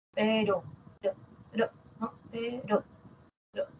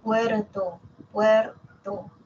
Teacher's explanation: la vibrante simple que es como un solo tap como un solo golpe no pero per per no pero per Ahí está un solo